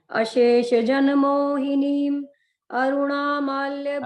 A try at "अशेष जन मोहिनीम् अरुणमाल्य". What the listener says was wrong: अरुणा नहीं है, अरुण. अरुणमाल्य.